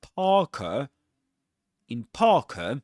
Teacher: the letter R is not pronounced because right after it comes a consonant sound